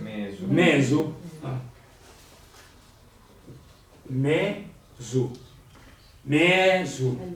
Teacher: Perché la E non trova più la prima Z, s'allunga per aguantare l'altra e diventa lunga. C'è una caduta di consonante dalla Z.